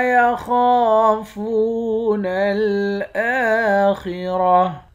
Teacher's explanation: حمزے کے اوپر کھڑا زبر ہے، کھڑے زبر کو بھی ایک الف کے مقدار کھینچ کر پڑھیں گے۔ خا اور را، ان دونوں حروف کو موٹا پڑھیں گے، آخر میں گولتا ہے، گولتا پر جب وقف کرتے ہیں تو گولتا ہا بن جاتی ہے۔